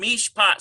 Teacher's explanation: Well, that's got to be a dagesh lean because there's no doubling. We just have one P sound.